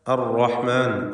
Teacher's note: റായിന് തഫ്ഖീം കൊടുക്കണം തടിപ്പിച്ച് റായിനെ ഉച്ചരിക്കുക